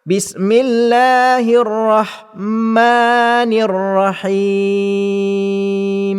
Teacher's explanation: huruf ha yang mesti dibaca dengan pertengahan halkum. Dan yang ketiganya ialah huruf mim, mesti merapatkan dua bibir mulut sehingga terdapat dengung setengah harakat.